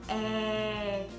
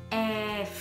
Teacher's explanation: nó sẽ bắt đầu bằng E mình chỉ bật hơi ra thôi